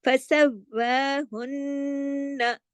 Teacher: زبر بھی ہے، فَسَوْ، پہلے فَسَوْ اور پھر وا، یعنی پھر کھڑی زبر ایک الف کے برابر پڑھی جائے گی، لیکن باریک، یہ موٹا نہیں کرنا ہے